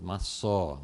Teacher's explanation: a sílaba tônica é no fim e que a pronúncia é massó. Não maçá, mas maçó, alguma coisa assim.